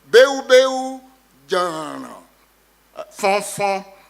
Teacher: High tone throughout in beu beu, low tone in jana jana, middle tone in fon fon. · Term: tone distribution